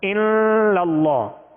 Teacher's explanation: ناک میں آواز لے جا کر ایک الف کی مقدار میں ٹھہرانا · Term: غنہ